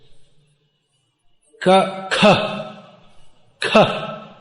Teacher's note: The K with almost like an H after it. And actually in pronouncing Sanskrit properly, it should be pronounced quite strongly.